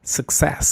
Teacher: La primera u representa una vocal reducida, es decir, una shua.